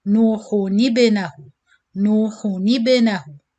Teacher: Nuhu, so as you know with dhamma you have to circle your lips, so you circle your lips in ha dhamma, hu, but you return quickly to do noon kasra without circling, then you join it with the ba sakin with qalqala, nuhun ibnahu.